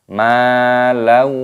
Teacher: Alladzi jama'a ma, mimnya dibaca panjang, ada tanda alifnya, matobi'i dipanjangkan dua ketukan. Malau, fathah tanwin, bertemu dengan wawu hukumnya dibaca idgham bi gunnah, dimasukkan dan disertai berdengung.